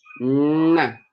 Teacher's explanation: we press our tongue to the alveolar, to that place above our upper teeth. And we shoot it forward.